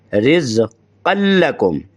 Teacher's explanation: قان کی نون کو لکم کی لام میں ادغام کریں گے، لہذا بن جائے گا رزقا لکم۔